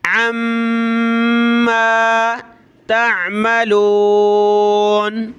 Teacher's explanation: میم پہ یہ تشدید ہے تو ہم نے غنہ کرنا ہے